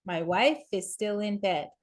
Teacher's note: The F blends into the I in the is.